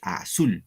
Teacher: Entonces el acento va en sul.